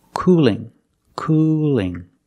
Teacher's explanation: The tongue is straighter and thinner. It's not expanded at the bottom. It's not coming up at the bottom. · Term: light L